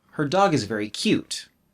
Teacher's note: stress also affects the intonation a bit there's a little bump on dog because it's stronger than her